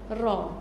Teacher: Ra akan cenderung melentur ke belakang hujung lidah dan melencong ke makhraj lam. Ra. Dia akan melencong kepada makhraj lam, belakang sikit daripada dia. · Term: inhiraf